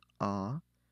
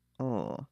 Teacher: you can say with an open mouth ah or with a round mouth o